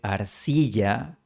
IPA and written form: aɾ'si.ʝa (arcilla)